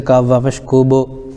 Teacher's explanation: جیسے طامۃ الکوب. با حروف قلقلہ میں سے آ رہا ہے اس لیے ان کے مخرج ٹکر کھا کر الگ ہو جاتے ہیں